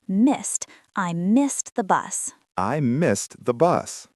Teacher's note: Make sure you hit the T sound at the end of missed. It is a past tense verb ending in ed, but it sounds like a T.